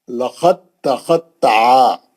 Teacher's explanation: آپ لقد بول کے آپ دال کا خلخلہ کر دیے تو غلط ہو جاتا، دال تا کے اندر چلے گئی اور تا مشدد بن گئی متحرک سے، اور آپ تا سے ہی پڑھیں گے، دال نکل، دال ادغام کر گئی، دال غائب ہو گئی، لقد تخطع۔